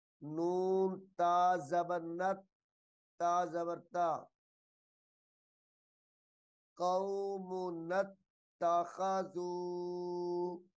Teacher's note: نون کو تا مشدد کے ساتھ ملا کر پڑھا جائے گا